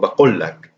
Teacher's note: So the qaf is farther back in the throat. But actually, in Palestine itself and in a couple of different places, it is actually pronounced as kaf.